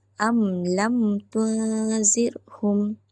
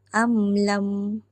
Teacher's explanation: Cara untuk kita kenal hukum ni adalah hukum ni dikenali dengan melihat pada mim yang bertanda sukun di atasnya bertemu dengan kesemua huruf hijaiah yang berbaris melainkan huruf mim dan ba. Cara bacaan adalah jelas dengan merapatkan kedua-dua bibir atas dan bawah dan membawa suara ke pangkal hidung sekadar untuk meraikan sifat tawasud. Jadi kat sini kita faham bahawa bacaan tu tidaklah terlalu laju dan tidaklah terlalu lambat. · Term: izhar syafawi